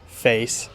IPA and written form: feɪs (face)